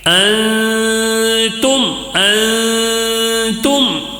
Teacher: نون ساکن کا اخفاء، نون ساکن کا اخفاء ہوگا، غنہ کر کے پڑھیں گے